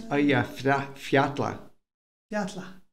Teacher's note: But what I found out, or I discovered, and I could be wrong, when people were pronouncing it, Icelandic people were pronouncing the double L sounds like a TL.